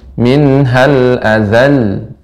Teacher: Nam coba silakan minal adal nam agak lebih panjangkan lamnya karena tasdid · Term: tasydid